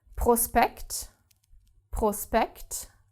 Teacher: s and p are separated and therefore do not create this shp sound